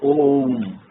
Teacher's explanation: देखिए ओ और उसके बाद 3 और फिर म, तो ओम, अर्थात ओ को 3 मात्रा का समय हमने देना है और उसके बाद में म बोलना है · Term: प्लुत स्वर